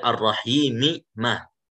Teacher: sekarang kita baca riwayat Susi dengan mengidghamkan mim pertama pada mim kedua. Nah, yaitu boleh 2 harokat, 4 harokat atau 6 harokat. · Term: idgham kabir